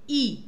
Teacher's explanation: ई में आपने देखा जीभ का आगे वाला पार्ट यूज हो रहा है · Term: अग्र स्वर